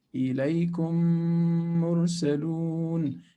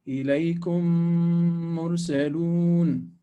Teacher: Meme number one, meme number two. Meme number one is always with sukun, and meme number two will have a shadda on it, shadda quality. So both of them become one. They are merged. There is idgham. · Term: Idgham shafawi